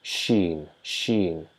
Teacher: So not the front palate, but the middle or back palate of our mouth, the hard part of our palate, above palate in the mouth. And the tongue tries to raise towards that palate when we try to pronounce sheen